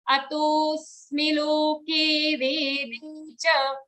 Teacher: Smi is a hrasva sound, so we'll immediately join the next word to it. We'll not take a pause.